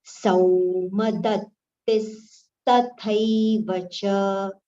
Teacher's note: Sau, it is sau, sa with au, it is not so, it is sau.